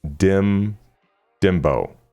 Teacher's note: Pronounce Dimbo as dim. Stress the second syllable bow which sounds like bow or the English word do.